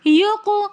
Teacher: یق میں قاف حروف قلقلہ میں سے کلمے کے درمیان میں ساکن حالت میں آ رہا ہے تو اس لیے ہم قاف کے اوپر قلقلہ کریں گے. قلقلہ کہتے ہیں آواز کو واپس پلٹا کر لے کر آنا.